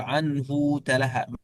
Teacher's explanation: ولكن قنبل يقول عنه تلهى من غير تشديد